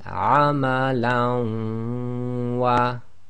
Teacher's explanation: So lam with fathatain followed by waw, one of the yarmalun letters, and it's done with a ghunna because it's one of the human letters. So we read the waw as if it's got a shadda, so this will be amalan wa, ghunna and assimilation.